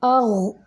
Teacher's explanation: आगो, ना, इसको ज़बरदस्ती रोकेंगे। आगो, इसको पुर भी करेंगे गैन को, क्योंकि गैन पुर हरूफ में से है, यानी मोटे हरूफ में से।